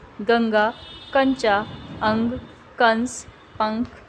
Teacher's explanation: अनुस्वार हम अंग की मात्रा को कहते हैं। इसका उच्चारण करते समय नाक से ध्वनि निकलती है